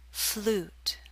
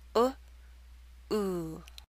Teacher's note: Which vowel sound is longer? The oo in flute is longer.